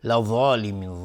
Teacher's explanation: ضاد از حروف استعلاء غلیظ تلفظ میشه و الف هم تابع ضاد غلیظ تلفظ میشه. لظالمین مد عارض السکون به مقدار 2 یا 4 یا 6 حرکت میتونیم مد بدیم.